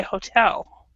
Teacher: Okay, and this one is fairly common. In English, we actually do not stress the first syllable, so we say hotel.